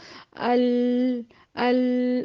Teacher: آپ کی زبان کا سامنے کی گولائی کا جو نوک ہے وہ اوپر جا کے مسوڑوں میں فکس ہو جائے گی اور سائڈ سے آواز باہر نکلے گی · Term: لام کا مخرج